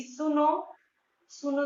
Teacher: इनको बोलने में दीर्घ से भी अधिक समय लगता है। यह अक्सर किसी को पुकारने के लिए प्रयोग किया जाता है। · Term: प्लुत स्वर